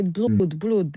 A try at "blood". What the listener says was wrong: So blood. So the vowel sound in the middle. It because it's two O's. It doesn't make it doesn't mean you say the sound for a longer period of time.